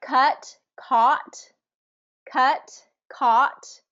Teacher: But you can really only get that ah sound if you get that jaw dropped, because otherwise, what's the difference between ah, ah? The only difference there is how much I drop my jaw.